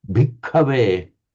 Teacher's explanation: the very distinct doubling of the K, and also the very distinct aspirating of the K